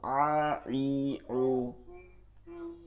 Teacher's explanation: আইন হা হালকের মধ্যখান থেকে, ঠিক আছে, চাপ দিয়া